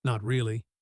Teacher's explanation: The sound of someone genuinely considering a decision, rather than reciting a rehearsed answer. Not really at the end falls softly. Almost trailing off. Gentle and a little wistful.